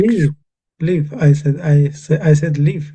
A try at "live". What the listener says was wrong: it sounded like leave, leave, as when you leave a shop, you leave the door open, that sort of thing.